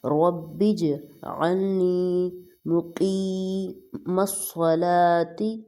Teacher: با کو جیم کے ساتھ جوائن کریں گے اور قلقلہ ہوگا